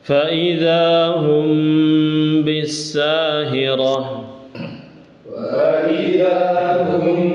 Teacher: Ikhfa Syafawi ya dibacanya dengung digunahkan